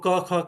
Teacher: क्यों कहे गए? क्योंकि उनमें गूंज नहीं है, नाद नहीं है। स्नायु तंत्रियां दूर-दूर खड़ी है और ऐसे ही ज्यादा एरी नॉइस ज्यादा सूखा सूखा ऐसे जो है ज्यादा ड्राई ऐसे जो साउंड बाहर आ रहा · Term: कठोर